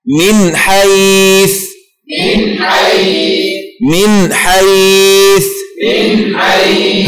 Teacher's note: حرف الحاء من حيث، من حيث، من حيث، من حيث. هكذا تقرع النون الساكنة بدون غنة زائدة قدر حركة واحدة